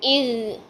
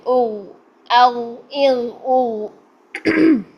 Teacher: ٹھیک ہے، پیچھے زبان کی جڑ اوپر اٹھا لیں اور پھر غین کو موٹا کریں. آواز جو ہوگی منہ سے باہر نہیں نکلے گی بلکہ پیچھے حلق کی طرف پھینک دیں، پھر غین خود ہی موٹا ہو جائے گا. ٹھیک ہے، اور ہلانا نہیں ہے، اغ نہیں کرنا ہے. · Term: غین موٹا